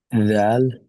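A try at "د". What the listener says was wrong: Perfect. Jazakallah khairah.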